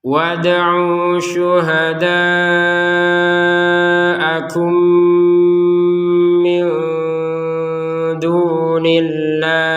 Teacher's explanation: Nun sukun bertemu dal dibaca dengan samar.